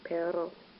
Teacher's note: when there's a double R, you sort of roll the R sound with your tongue